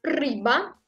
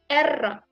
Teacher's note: cette lettre se roule en russe, comme en italien par exemple